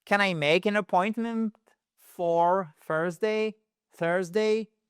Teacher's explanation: On remonte. Pourquoi on remonte? Parce que c'est une yes, no question.